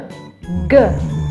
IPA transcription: g